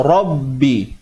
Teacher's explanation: Dengan adanya sabdu, maka kita lihat di situ adanya unsur gandaan pada sebutan kita tu. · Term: huruf bersabdu